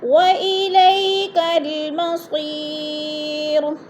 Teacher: یا ساکن سے پہلے صاد کے نیچے زیر ہے تو یا مدہ کو ایک الف دو حرکات کے برابر کھینچ کر پڑھنا ہے